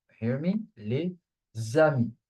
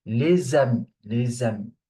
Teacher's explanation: The first part ends with a consonant, so we do the linking sound, la liaison.